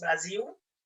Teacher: a questão da pronúncia do L, como em Brasil, né, que nós pronunciamos com som de U mesmo